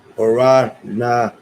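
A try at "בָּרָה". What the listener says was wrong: No, it's ha. Bara ha.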